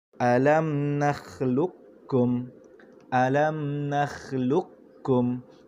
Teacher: huruf qaf tebal, huruf kaf nipis, tetapi kita masukkan terus ke dalam huruf kaf yang nipis itu. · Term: idgham mutaqaribain